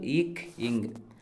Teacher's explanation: நாவின் முதற பகுதி, அன்னத்தின் அடிப்பகுதியை பொருந்துதால் பிறக்கும் எழுத்துக்கள்